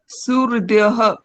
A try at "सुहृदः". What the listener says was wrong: सुहृदः। आप बोलते वहां पर हृदय, यह सुनाई दे रहा है, यह नहीं बोलना है। सुहृदः दः।